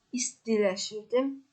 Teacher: Buradakı t D kimi tələffüz olunur, yəni istiləşirdi.